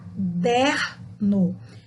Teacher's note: dar um outro exemplo de uma paroxítonas sem acento tá caderno reparem que o som do der foi mais alto do que as outras sílabas